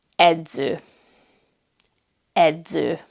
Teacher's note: Next we have the letter combination DZ, and this is the letter Z. It has the Z sound like at the end of English words kids, friends, hands.